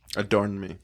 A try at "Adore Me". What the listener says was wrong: Adore me. Not adorn. No N. Adore, Like I adore you.